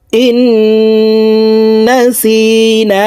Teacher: আলিফ টেনিয়া পড়িতে হয় ربنا لا تؤاخذنا إن نسينا এই নুন এই তাসদিদওয়ালা নুনের সাথে গুন্নার সহিত পড়ব